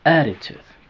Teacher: Attitude tiene 3 sílabas. La segunda sílaba es débil. La primera es la tónica. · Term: sílaba tónica